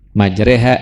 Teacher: imalah hanya satu tempat untuk riwayat hafaz di surah Hud ayat ke-41 di huruf ro-nya saja